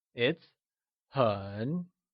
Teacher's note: hon is said with a falling rising tone or the third tone